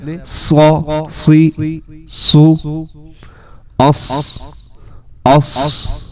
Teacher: موٹا بھی اس کو کیا جا رہا ہے اور ساتھ اس میں سیٹی بھی ہے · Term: صاد